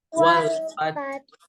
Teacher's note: Suara H kecil yang berharokat sukun itu harus dialirin suaranya. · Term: huruf H kecil